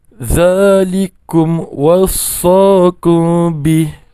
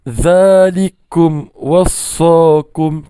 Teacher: Kum wassa tu jangan baca dengan dengung. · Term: izhar syafawi